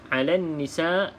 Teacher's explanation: abaikan huruf lam tersebut tidak perlu dilafazkan dalam bacaan terus masuk ke dalam huruf nun yang bersabdu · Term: alif lam syamsiah